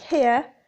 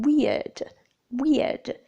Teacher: the lips are neutral with a slight movement from spread to open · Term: centering diphthongs